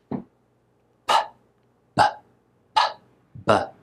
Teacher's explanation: P and b are both bilabial, which means two lips. You bring your two lips together. P, b, p, b, and let air out between them.